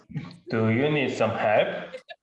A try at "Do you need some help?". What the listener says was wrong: Is this sarcastic? Or you really asking? What is that tone?